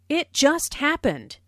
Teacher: Notice the stress on just, which emphasizes that the accident happened very, very recently.